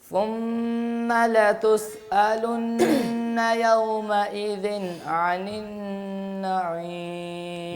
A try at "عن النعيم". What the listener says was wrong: بس یہ عین جو ہے یہ آپ کی مسلسل موٹی ہی جا رہی ہے، اس کو باریک کرنے کی کوشش کریں. عن النعیم،